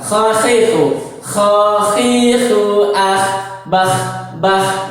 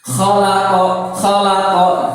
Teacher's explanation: Ingat, kho harus berekho di tenggorokan. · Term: huruf kho